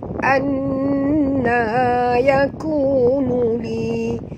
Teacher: dekat nun ada tasydid, jadi kita kena dengung. Hukumnya wajib dengung, wajibal gunnah, ya. Gunnah tu dalam bahasa Melayu bermakna dengung, ya.